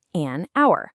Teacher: Take the word hour. It starts with an H, but we don't pronounce it. The first sound is a vowel. So we say an hour and the reverse is true for a word like university.